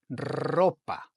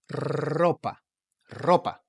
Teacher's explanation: you have to pronounce it with strength and you have to let your tongue vibrate. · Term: strong sound